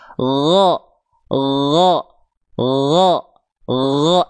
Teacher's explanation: Yang ngalir cuma suara, nggak ada keresek-keresek nafasnya. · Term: huruf ghain